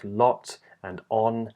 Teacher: an O vowel, found in words like lot and on, and that's made with rounded lips